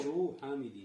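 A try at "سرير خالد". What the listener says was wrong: Это не хамид, это ха. Сариру халидин.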